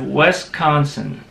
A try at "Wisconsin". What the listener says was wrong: See, it sounded like you said West-consin. Not West.